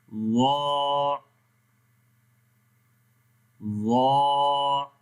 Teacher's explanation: تو جب ہم زبان کی نوک کو یہ کنارے اوپر والے دانتوں کا کنارہ ہے یہاں پر لگائیں گے تو ضا پڑھا جائے گا، اور کیونکہ ضا کو موٹا پڑھتے ہیں، یہ گرین حرف یہاں پر ہے، تو اس کا مطلب یہ ہوتا ہے کہ آپ کی زبان کی جو جڑ ہے وہ پیچھے سے اوپر کی طرف اٹھے گی، مطلب کہ آواز پیچھے سے اوپر کی طرف اٹھتی ہے۔ تو پڑھیں گے وا، وا۔